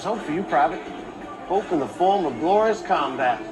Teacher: he's way down in his mouth his face is kind of droopy when he pronounces everything and he's non-rhotic drops all his arse and has explicitly stated this is not